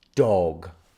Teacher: Round your o sounds. In British English, we say dog with a circle.